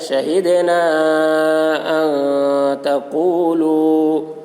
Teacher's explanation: شہدنا الف سے پہلے زبر ہے، الف مدہ ہوا، اس لیے الف مدہ کو ایک الف کے برابر کھینچ کر پڑھیں گے۔ حرف مد کے بعد حمزہ دوسرے کلمہ میں ہے، اس لیے مد منفصل ہوا، مد منفصل کو 3 یا 4 الف کے برابر کھینچ کر پڑھیں گے۔ ایک الف کے برابر کھینچ کر پڑھنا بھی جائز ہے۔